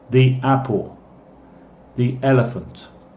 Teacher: La letra E suena como un I en español. Ejemplos: the apple, the elephant.